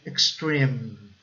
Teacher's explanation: aquele som de I mais curto é um som mais misturado entre I e o E.